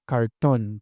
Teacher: Polimorfismo de R en posición implosiva que incluye una articulación retrofleja como la del inglés